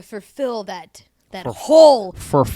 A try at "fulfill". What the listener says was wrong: For. not fur. For fill.